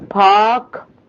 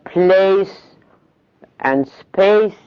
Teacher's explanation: يعني الاثنين نفس الفونيم بس they are different members of the phoneme. In park, aspirated, initial, whereas place and space it's unaspirated. يبقى aspirated و unaspirated per because in the first one it's not followed by a vowel and in the second it's preceded by S.